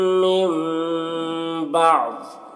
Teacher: नून साकिन के बाद बा है तो यहाँ पर इक़लाब होगा, इसमें गुन्ना इख्फा के साथ पढ़ेंगे